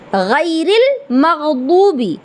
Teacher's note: गैरिल मग़दूबी, अब गैन है, गैन का मखरज क्या है, हलक का ऊपर वाला हिस्सा। गैन गाफ नहीं है, गैन है।